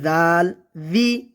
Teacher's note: জিব্বার আগা সামনের উপরে 2 দাঁতের আগার সঙ্গে লেগে উচ্চারণ করতে হবে